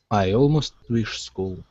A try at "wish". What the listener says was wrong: give me a short i as well instead of wish it's wish